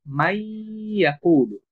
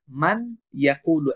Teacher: কিন্তু যখন নুন সাকিনের পরে ইদগামের হরফ ইয়া আসবে, তখন এই নুনটা আমরা পরবর্তী শব্দের শুরু যে হরফ এই ইয়ার সাথে যুক্ত করে পড়ব। ফলে এই নুনটা তখন অনুচ্চারিত থাকবে এবং ইয়াটা দুইবার উচ্চারণ হবে